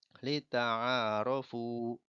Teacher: Panjangnya ain dengan fa itu 2 harokat. Karena termasuk bacaan mad.